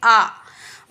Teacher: विवृत मतलब ओपन पूरा जब मुंह खोल के बोलते हैं तो वह विवृत में आता है जैसे आ अर्धवृत्त मतलब हाफ ओपन जैसे अ ए ओ औ